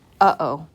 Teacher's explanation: it's the uh sound that is what we call a glottal stop in english okay and it comes from the chest and in english all